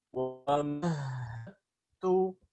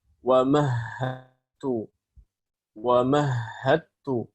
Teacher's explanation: Nggak ada lagi. Hilang huruf dalnya, sifatnya juga hilang, langsung diidghamkan ke ta, namanya idgham kamil.